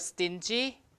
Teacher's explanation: T is also unaspirated because it's after an S